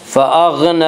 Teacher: فأغنی، نون کے اوپر کھڑا زبر ہے، کھڑا زبر کو ایک الف کے برابر کھینچ کر پڑھیں گے